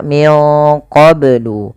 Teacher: melafal qablu ini banyak harus dipantulkan karena ia ada bacaan qalqalah.